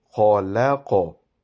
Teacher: qaf is also pronounced with a round-shaped mouth, but because this has a jazm on it, it will have a qalqala